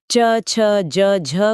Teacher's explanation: उच्चारण के समय जीभ तालु को स्पर्श तो करती ही है लेकिन हवा को बाहर निकलने के लिए थोड़ा एक्स्ट्रा संघर्ष भी करना पड़ता है। मतलब स्पर्श और घर्षण दोनों है। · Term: स्पर्श संघर्षी